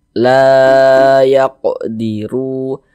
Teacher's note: Mad Thobi'i panjang dua harakat dua harakat kira-kira sepanjang dua ketukan